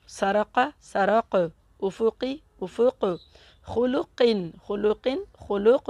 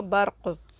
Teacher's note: ये हुरूफ़ क़लक़ला जब आखिर में आएंगे तो इन पर बड़ा क़लक़ला होगा, यानी कि इनको कहेंगे क़लक़ला कुबरा, यानी कि इसकी आवाज़ थोड़ी सी ज़्यादा आएगी